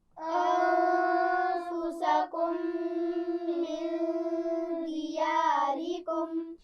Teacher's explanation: نون ساکن پر غنہ ہوگا، اور انفسکم کی میم پر بھی غنہ ہوگا کیونکہ اس کے بعد میم آ رہا ہے